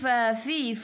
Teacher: fu gigi atas menyentuh perut bibir bawah